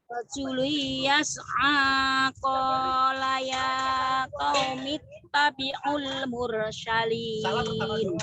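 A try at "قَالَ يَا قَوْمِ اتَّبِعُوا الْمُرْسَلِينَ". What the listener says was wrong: Sinnya biasa, mursalin jangan mursyilin. Mursyilin jangan. Mursalin S biasa. Saya suka S mursalin ya.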